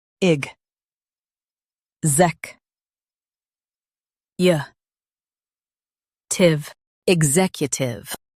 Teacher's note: Emphasize zec and keep u-tive flowing.